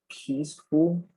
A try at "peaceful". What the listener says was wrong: Peaceful, not full.